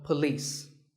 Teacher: It's pa and lis with the stress on lis.